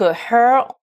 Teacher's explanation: le son plus commun en anglais qui est le son que l'on fait en baissant la mâchoire inférieure · Ensuite, donc her, on prononce le H, et là les lettres ER font le son schwa, et toujours, là aussi je vous renvoie à la vidéo sur le son schwa, le son le plus commun en anglais, qui est le son A, que l'on fait en baissant la mâchoire inférieure